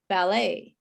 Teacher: For example, words that we have brought in from other languages, like ballet, which is a French word. We don't say the T at all, and the AET is pronounced A